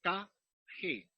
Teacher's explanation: Se produce el sonido en la parte posterior del paladar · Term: Los velares